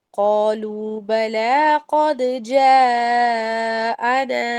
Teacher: قد پر آپ نے دال پر قلقلہ کرنا ہے